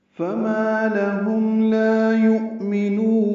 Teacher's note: یؤمنون میں حمزہ ساکن جھٹکے سے ادا ہوگا · فما الف مدہ ہے، دو حرکات لمبا ہے. لہم میں لام کو جلدی پڑھیں گے، ہاں اقصی حلق سے ادا کریں گے.